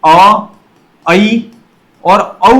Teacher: अर्ध विवृत के अंतर्गत अ ऐ और औ जो है वह अर्ध विवृत के अंतर्गत आते हैं